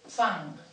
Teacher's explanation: la N es torna a velar després de la C, del so K, i de la G